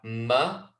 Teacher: letter meme on the left hand side you can see that both lips are coming together and it's the dry parts of your lips